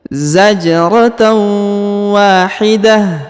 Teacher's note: huruf ta marbutoh yang di ujung berharokat an atau berharokat ya tanwin yang ini ya, maka dia berubah menjadi ha sukun karena kita berhenti di sini ya.